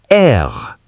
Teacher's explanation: It's a tight one. R is air, pronounced air at the back of the throat. Pretend you're a sophisticated lion.